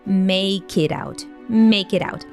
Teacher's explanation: the k sound from make gets linked to the following word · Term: connected speech